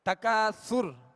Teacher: تکاثر میں جب را ہم نے ساکن کی تو را کو ہم نے پر پڑھا. اس بات کو ذہن میں رکھیے گا کہ را ساکن ہو اور اس سے پہلے والے حرف پر زبر یا پیش ہو تو را کو پر پڑھیں گے, اور را ساکن ہو اس سے پہلے والے حرف کے نیچے زیر ہو تو را کو باریک پڑھیں گے.